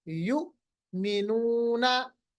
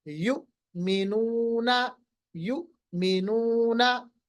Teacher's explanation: यू के बाद थोड़ा सा आवाज रोकिए एक सेकंड के लिए, उसके बाद पढ़िए युमिनूना, युमिनूना, ठीक है। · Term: झटका